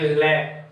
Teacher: ले, जैसे ले का उच्चारण करेंगे ले तो जीभ आगे आ जाएगी, लेकिन जो श्वास वायु है वो जीभ के अगल बगल से मसूड़ों से होकर के बाहर निकल जाती है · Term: पार्श्विक